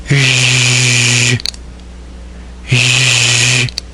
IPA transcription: ʒ